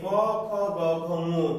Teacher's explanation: কণ্ঠ বা জিহ্বার মূল থেকে উচ্চারিত হয় বলে এদেরকে বলা হয় কণ্ঠ বা জিহ্বা মূলীয় বর্ণ।